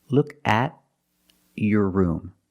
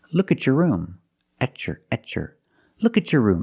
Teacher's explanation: When you have a T before a Y in two separate words, and you link the pronunciation of the two words, you will hear the ch sound.